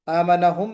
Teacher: मीम साकिन के बाद मीम का इदगाम, मीम मर्ज हो गया। वआमनहुम तो गुन्ना होगा।